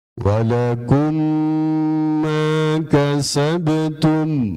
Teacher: Kalau ada mim yang mati, mim sukun itu, kalau bertemu huruf mim, maka dia ngetem. Dua harokat, ada tempo di situ. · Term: Idgham mitlan